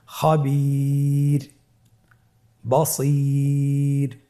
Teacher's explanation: এখানে আপনারা দেখতে পাচ্ছেন স্ক্রিনে যে ওয়াকফের কারণে রটাকে সাকিন দেওয়া হয়েছে এবং তার পূর্বে ইয়া সাকিন রয়েছে, তাহলে সর্ব অবস্থায় আমরা রকে পাতলা করে পড়ব